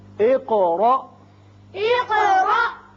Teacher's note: قاف کی صفت قلقلہ اور آگے الف ساکن جو ہے جھٹکے سے پڑھا جائے گا